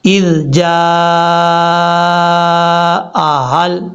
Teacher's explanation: الف کے اوپر جو مد ہے یہ مد متصل ہے، 2.5 الف کے برابر لمبا کرنا ہے · کے ساتھ نہیں پڑھنا، اس کو نارمل طریقے سے پڑھنا ہے، اس کا مخرج زبان کا سرہ اوپر والے جو دو دانت ہیں ان کے اندرونی کنارے سے لگے تو ذال پڑھا جاتا ہے